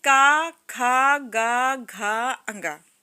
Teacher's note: क ख ग घ अ ङ तो यह कंठ से निकलता है